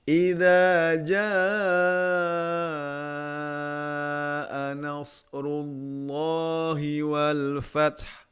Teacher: Perhatikan huruf sa-nya tebal, kemudian huruf ro-nya tebal karena dhammah.